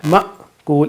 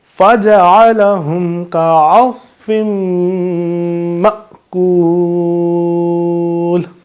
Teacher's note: جب حمزہ پہ تو ہم وہاں پہ پھر جھٹکا دے کر پڑھتے ہیں، اس کو ذرا ماکول اس طریقے سے پڑھتے ہیں.